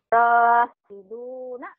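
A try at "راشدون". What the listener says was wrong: Shinnya mana shinnya? Shinnya.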